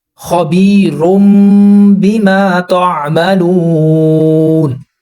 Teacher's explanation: تو اس نون کی جگہ جو آواز تنوین کے اندر چھپی ہوئی ہے اس کی جگہ ہم نے میم کو لگانا ہے